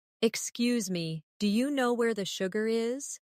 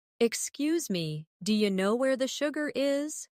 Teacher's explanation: Notice how do you changes to dia?